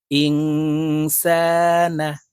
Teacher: নুন সাকিনের পরে ইকফার হরফ সিন আসছে তাই এই নুনকে নাকের ভিতরে লুকাইয়া গুন্নার সহিত পড়বো